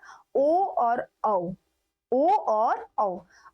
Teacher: कंठोष् यानी कि कंठ की भी आवश्यकता पड़े और होठ की भी आवश्यकता पड़े